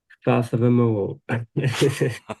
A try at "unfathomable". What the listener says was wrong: That's not bad, actually.